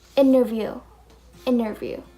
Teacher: So we're not gonna pronounce the T.